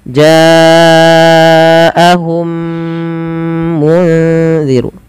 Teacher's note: memasukkan mim pertama kepada mim kedua dan ditahan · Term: idgham mimi